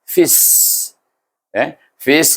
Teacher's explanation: Fis, ingat, iaitu sifat huruf sin ini hamas dan safir. Sebab bunyi fis, ada angin, ada desir.